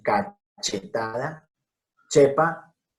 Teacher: no es sonido suave inglés she, sino el fuerte che que usamos en cachetada, chepa y muchísimas otras palabras